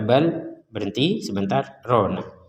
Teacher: dibaca bal berhenti sebentar rona, jangan dibaca bal rona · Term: saktah